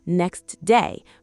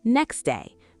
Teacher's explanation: If you say it carefully, it's next day, but in conversation, next day. The T disappears completely. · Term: dropped T